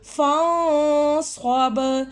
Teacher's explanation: یہاں پہ نون ساکن کے بعد صاد آ رہے ہیں، ہم یہاں پہ نون کی آواز کو چھپا کر پڑھیں گے.